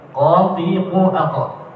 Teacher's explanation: di pangkal lidah, bagian belakang ada huruf qaf yang ditempelkan di langit-langit atas bagian lunak